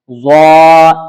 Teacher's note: ضا اسے بھی پر یعنی موٹا کر کے پڑھنا ہے